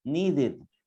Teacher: The ed is pronounced as id.